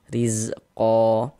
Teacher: Huruf ro-nya dibaca tarkik, dibaca tipis. Baris satu di bawah huruf harokat kasrah.